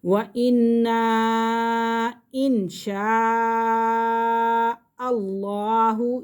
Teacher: بڑا مد ہو رہا ہے کیونکہ حمزہ اپنی اصلی حالت میں ہے